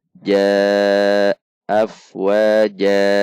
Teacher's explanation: Jan. Namun karena di akhir kalimat maka jan menjadi ja, yaitu mad iwad, dibaca 2 ketuk